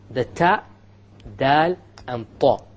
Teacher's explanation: These three letters, they are produced not just by the tip, but by the tip along with the upper portion. It has to stick with the gum.